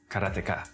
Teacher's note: In Japanese, there's no stress on any syllable, so it would be Karateka